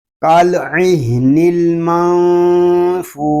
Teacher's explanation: یہاں نون ساکن میں اخفا ہو رہا ہے کیونکہ نون ساکن کے بعد حروف اخفا میں سے فا آ گیا